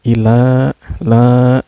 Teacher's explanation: Ilahin nas, la-nya ini dihukumi mad asli atau mad tobi'i karena di huruf lamnya ini berbaris patah yang berdiri ya. Ini cara bacanya dipanjangkan 2 harakat